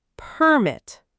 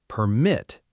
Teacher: In English, many two-syllable words that can be used as both a noun and a verb, they follow this pattern. When the word is a noun, the stress is on the first syllable. When the word is a verb, the stress is on the second syllable.